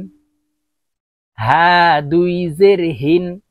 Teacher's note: এটি ছোট হা হলকের শুরু থেকে উচ্চারণ হবে।